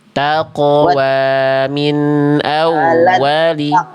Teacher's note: kof sukunnya pantulkan Bunda. Ada kol-kolah.